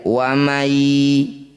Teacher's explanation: Perhatikan nun sukun bertemu ya di lain kata maka jadilah bacaan idgham bighunah. Bacanya harus dengung dan masukkan bunyi nun pada ya. Wamai. Nun sukun dan ya berpencar ada di dua kata.